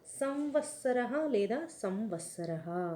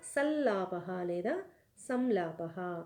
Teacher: య వ ల అనే వర్ణాలు అనుస్వారానికి పరంలో ఉన్నాయి కాబట్టి అనుస్వారం స్థానంలో అనునాసకతో కూడిన య వ ల లు క్రమంగా ఆదేశం చెందాయి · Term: పరసవర్ణ సంధి